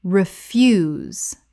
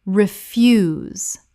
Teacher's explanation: Refuse, the noun, rubbish. Refuse, stress on first syllable.